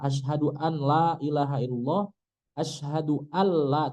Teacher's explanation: Kalau ketemu lam nggak boleh ada gunahnya. Contohnya asyhadu asyhadu an la ilaha illallah, asyhadu alla, tidak boleh ada hidungnya tuh, tidak boleh ada gunnahnya, bukan hidung.